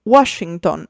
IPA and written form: ˈwɔʃʃinton (Washington)